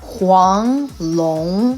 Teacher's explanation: it has a tone so it's not neutral anymore it's going up